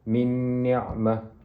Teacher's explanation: nun mati bertemu dengan nun merupakan wajibul gunnah, maka perlu dibaca dengan dengung 2 harakat